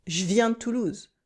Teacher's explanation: a French person would pronounce them faster, cutting the Je, for example.